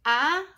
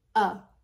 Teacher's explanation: the vowel gets lazy and instead of saying ah we say uh